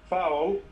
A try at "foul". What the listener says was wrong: Foul, not ow, o. O. Foul. Foul. Yes, not ow, o. يعني مو ow, o, عادية.